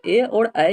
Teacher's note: ए और ऐ जो है ये कंठ तालु वर्ण होता है